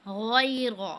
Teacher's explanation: रो पर ज़बर है, इसको पुर पढ़ना है हमने